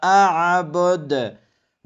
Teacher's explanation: در اینجا دو عین آمده که از وسط حلق ادا کنید و دال آخر را هم قلقله باید شود